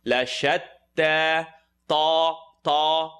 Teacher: Tip of the tongue is going to come behind the top two teeth. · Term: ta with the shadda